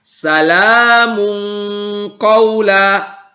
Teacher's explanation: Begitupun ketika ada tanwin bertemu dengan qaf misalnya. Maka tanwinnya kita baca samar-samar. Tidak dibaca jelas. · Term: ikhfa hakiki